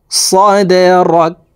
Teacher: দাল কলকলার হরফ নিচের দিকে ধাবিত করে ধাক্কা দিয়ে উচ্চারণ করব।